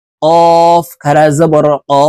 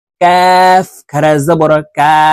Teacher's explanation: কফ হরফ জিহ্বার গোড়া তার বরাবর উপরের তালুর সঙ্গে লাগাইয়া উচ্চারণ করব, আর কাফ হরফ জিহ্বার গোড়া থেকে একটু আগে বাড়াইয়া উচ্চারণ করব